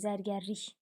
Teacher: Vurğu üçüncü hecanın üzərindədir.